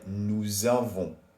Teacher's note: because avoir starts with a vowel, we have to do la liaison. So it sounds like nous avons.